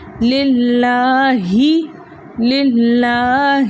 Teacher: اقصی حلق، یعنی حلق کا وہ حصہ جو سینے کی جانب ہے، جہاں ہمیں ایک گھڑا سا محسوس ہوتا ہے، اقصی حلق کہلاتا ہے. تو ہم نے اس ہا کو اقصی حلق سے ادا کرنا ہے